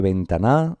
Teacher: estamos en una palabra que tiene el acento o la sílaba tónica en la penúltima sílaba. Por lo tanto, es una palabra llana.